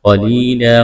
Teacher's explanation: قاف کو موٹا کرنا ہے، یا ساکن سے پہلے زیر ہے، یا مدہ ہے، ایک الف کے برابر کھینچنا ہے، وقف کریں گے، دو زبر کی تنوین کو الف سے تبدیل کرنا ہے۔